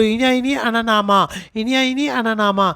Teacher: పంచమి వర్ణాలు అనేవి ముక్కు ద్వారాగా రిలీజ్ అవుతాయి కాబట్టి అనునాసిక వర్ణాలు